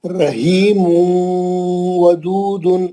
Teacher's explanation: رحیم واو میں گیا، گول منہ کرے واو کے واسطے